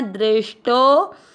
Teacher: टो के बाद में अवग्रह, आपको टो की मात्रा को लंबा खींचना